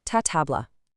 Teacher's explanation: It becomes tatabla. We're doubling that initial t sound.